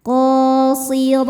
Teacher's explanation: Huruf ra dibaca secara tafkhim karena berharokat di atas yaitu harokat fathah. Cara bacanya ditebalkan.